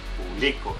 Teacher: el acento está en bli